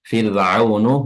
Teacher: huruf rnya di sini tarqiq ya tipis sukun yang didahului oleh kasrah